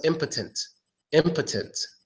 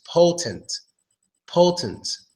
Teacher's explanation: Now, the main difference between these two words is that the O in the first word, impotent, gets the schwa sound. That O gets the schwa sound, so it becomes impotent, impotent.